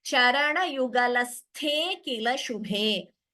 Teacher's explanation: But when we combine the sandhi, the a is dropped. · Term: purva rupa sandhi